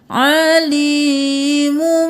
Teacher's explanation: میم 2 پیش میم مم اب ہم علیمن نہیں کریں گے میم پہ تنوین کی آواز نہیں آئے گی میم کی آواز آئے گی